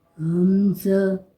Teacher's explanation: حلق کا منہ سے دور اور سینے کے قریب والا حصہ ہوتا ہے۔ حمزہ اقصائے حلق سے ادا ہوتا ہے